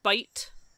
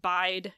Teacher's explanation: And we spell those almost exactly the same, except for the T and the D, and we hear them as basically rhyming, but they don't. Bite has that raised I, and bide has I.